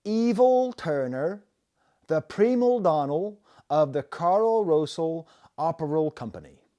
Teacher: There is a Bristol accent that has gone away largely because of TV and time, but it's adding an L at the end of words that end in a vowel and don't have an L